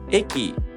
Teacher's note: The accent kernel is located in the first mora of the word.